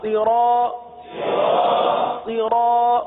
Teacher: اب یہاں پر بھی دیکھیے کہ صاد، حروف صاد کو ہم نے ہمیشہ پر پڑھا ہے، کیونکہ حروف مستعلیہ میں سے اس کو ہمیشہ ہم نے پر پڑھا ہے، تو یہاں پر بھی پر پڑھیں گے۔ را کے ساتھ الف ہے، الف مدہ ہے، 1 الف تک کھینچ کے پڑھیں گے۔ طا پر زبر ہے، تو طا کو تو بغیر کھینچے پڑھیں گے ہی، لیکن طا کو پر بھی پڑھیں گے، کیونکہ اس کو ہمیشہ، اس حرف کو ہمیشہ ہم پر پڑھتے آئے، تو یہاں پر بھی پر پڑھیں گے تختی نمبر 10 میں۔